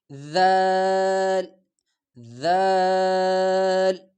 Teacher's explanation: اگلا لفظ تا اور اس کے ساتھ ذال، ذال زبان کی نوک معمولی سا دانتوں کے درمیان نکال کے ذال ذال